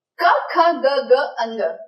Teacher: क, ख, ग, ग, अंग ये पांच अक्षर बोलते वक्त आपको मैक्सिमम वाइब्रेशन अपने कंठ प्रदेश से होगी